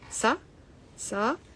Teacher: So the first a is short, sa, sa. And then the second a is long. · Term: long a